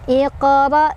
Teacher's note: Jadi cara bacanya adalah dipantulkan, pantulannya kecil ngalir. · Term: qalqalah sughra